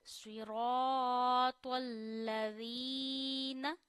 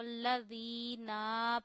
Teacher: नून पे जबर नहीं खिंचनी चाहिए